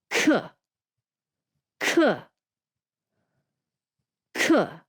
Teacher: to make this sound properly you're going to have to blow a little air out because it starts with that aspirated c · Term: aspirated k